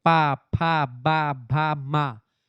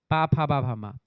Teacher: आपका जो प वर्ग होता है बेटा वो ओष्ठ से बोला जाता है। जैसे प फ ब भ म ये ओष्ठ व्यंजन है।